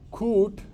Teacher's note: my lips are rounded because I have to say oo later. So it's coot, not k but ko.